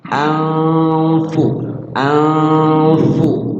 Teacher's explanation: Ikhfa-nya adalah ikhfa aqrab, Ya, kemudian cara baca ikhfa'nya itu nunnya disamarkan dan mulut kita langsung ke huruf fa